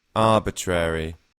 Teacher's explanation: in British English, the A is a little bit longer